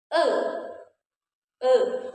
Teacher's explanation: Nah, posisi mulut kita itu dia semi tertutup. E e tidak terlalu terbuka dan tidak tertutup sama sekali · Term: e madya atas tengah